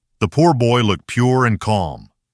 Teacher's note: In /ʊr/, don't let the rounded beginning drop away too early. Hold the rounding and let it carry smoothly into /r/.